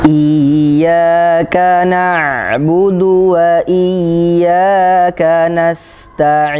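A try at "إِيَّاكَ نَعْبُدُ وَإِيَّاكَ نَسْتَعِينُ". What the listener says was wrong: Sekali lagi, bagus.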